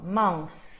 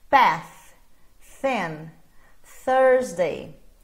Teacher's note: TH voiceless, ou seja, sem a vibração das cordas vocais